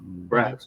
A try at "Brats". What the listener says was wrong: Brats. It's pronounced like the sausage, not the doll.